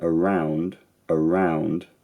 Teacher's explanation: it's a diphthong so it has a starting point and an end point the end point is slightly more fronted